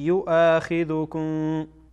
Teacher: این همزه از حروفی است که وقتی ادا میکنیم صدا حبس میشه